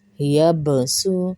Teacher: با زبر یب، سا سین پہ سو، یب سو، یب سو، سین پہ سختی ہوگی، با پہ کلکلا ہوگا